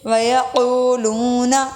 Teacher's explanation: نون کو لمبا نہیں کریں گے، کو اور لو حروف مدہ واؤ کی وجہ سے لمبے ہو رہے ہیں۔